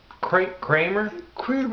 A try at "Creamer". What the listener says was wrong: Just like a creamery. Instead of, you call it Creamer. Creamer instead of CRA. Creamer.